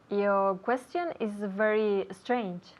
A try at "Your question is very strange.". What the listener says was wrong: Lo mejor de lo que acabas de decir ha sido tu pronunciación de la palabra strange,